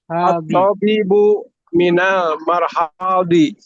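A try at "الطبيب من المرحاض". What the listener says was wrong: Bukan marhadi, mirhadi. Kasroh. Minal mirhadi.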